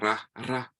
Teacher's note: You trill it a little bit